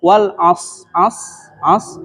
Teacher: yang pertama huruf shadnya tidak jelas shadnya itu mendekati huruf Sin padahal Sin dengan Shad itu beda S biasa dengan Shad itu lebih tebal